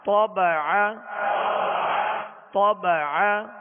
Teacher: طا کو پر پڑھیں گے اور عین کو درمیان حلق سے ادا کریں گے